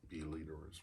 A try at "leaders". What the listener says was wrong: leaderers? You said leaderers. You added a syllable. You added a syllable in that. You added a syllable. You added a syllable. You said leaderers, but I knew you meant leaders.